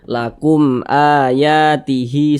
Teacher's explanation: kumnya jangan dipanjangkan pendek saja karena dia tidak digunahkan tidak didengungkan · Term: izhar syafawi